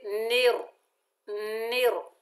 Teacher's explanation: نون کے نیچے زیر، آگے را مشدد ہے، نون کو را سے ملائیں گے، مضبوطی اور جماؤ سے پڑھیں گے، اور را کو موٹا پڑھیں گے